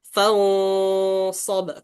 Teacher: Karena sod dia tebal, harus kita dari ikhfa itu kita tebalkan juga.